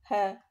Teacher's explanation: konsonan yang dihasilkan dengan pita suara yang terbuka lebar sehingga udara yang keluar digesekkan glotis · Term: konsonan laringal